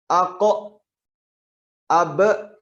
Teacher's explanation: menambahkan huruf hamzah di belakang bunyi qolqolah